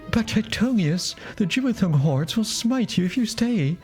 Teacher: An alarmingly breathy elvish voice.